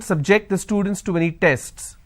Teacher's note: my stress has moved to the second syllable